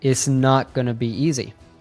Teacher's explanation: as often happens in fluent speech, we don't hear the T in its. So instead, it sounds like is.